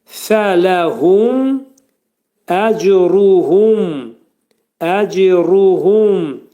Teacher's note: Mim burda izhar eləyirik. Ağız yumulur və mim hərfini izhar edirik.